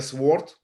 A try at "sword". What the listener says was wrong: it don't pronounce the W its sword sword sword